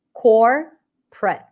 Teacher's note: where you have three syllables and the middle syllable is awah you may reduce the middle syllable completely